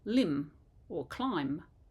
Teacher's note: if you think of words in English like Autumn we don't say that n on the end